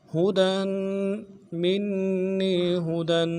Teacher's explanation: کھینچیں گے، منی ہدن، ہا کو نرمی سے ادا کرنا ہے، دال کے اوپر تنوین ہے، غنہ کریں گے، غنے کو ایک الف دار میں کھینچیں گے